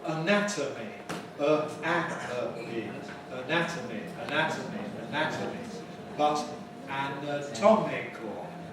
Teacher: the vowels change as the stress changes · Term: vowel reduction